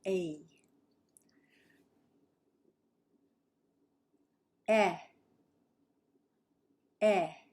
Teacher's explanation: we start with a and then we pull the tongue back